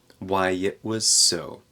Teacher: So here we have a glottal stop for the T in it.